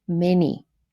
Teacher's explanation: it's two syllables with a first syllable stressed and the second syllable unstressed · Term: trochee